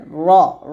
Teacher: মোটা করে র বলতে হবে আর ঠোঁট কিন্তু গোল হবে না র উচ্চারণ করার সময় আমরা অনেকে ঠোঁট গোল করে বলি তো